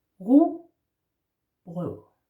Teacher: RU is r in the throat